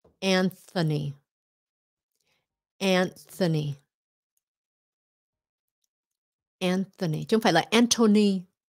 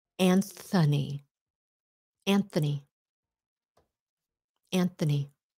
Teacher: there's a th in there and funny it's devoiced it's not voice